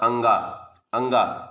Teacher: अल्प प्राण है, अधिक सांस मतलब नहीं निकलती